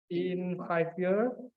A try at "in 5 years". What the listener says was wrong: Ada S-nya, 5 years.